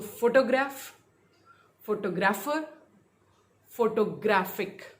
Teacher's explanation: फोटोग्राफ में फोटो पे रहेगा, फोटोग्राफर शिफ्ट हो गया